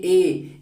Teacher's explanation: कंठ और तालु दोनों से मिलकर इनका उच्चारण होगा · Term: कंठ प्लस तालु